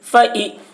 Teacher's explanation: زیر کو جلدی پڑھیں، تھوڑا بھی نہ کھینچیں، معروف پڑھیں، مجہول آواز سے بچیں